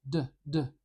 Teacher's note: I'm putting my tongue up behind my teeth and I'm stopping the air briefly and then exploding it out